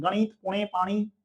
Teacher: गणित, पुणे, पाणी असं म्हणतो ना, ते नासिकेमधून त्याचा उच्चार होतो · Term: न बाणाचा न